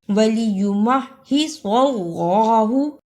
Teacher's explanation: صاد کی جگہ پہ سین کی آواز نہیں آنی چاہیے وَلِيُمَحِّصَ اللَّهُ صاد کو موٹا پڑھنا ہے وَلِيُمَحِّصَ اللَّهُ ام حسبتم